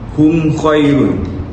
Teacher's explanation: huruf mim dibaca dengan jelas tanpa ada sebarang gunah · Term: izhar syafawi